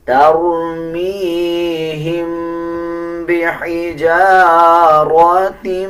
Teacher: اسی طرح آگے دیکھیں یہ میم کے اوپر جزم ہے اس کے بعد با آ رہا ہے، جب میم کے اوپر جزم آ رہا ہو اس کے بعد با آ جائے تب بھی غنہ کیا جاتا ہے اور غننے کی آواز کو ناک سے نکالا جاتا ہے